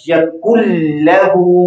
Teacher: अब कैसे पढ़ा जाएगा? यकुन लहू, मुकम्मल तौर पर नून जो है लाम के अंदर मुदगम हो गया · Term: इदगाम